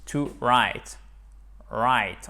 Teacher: on ne prononce pas le W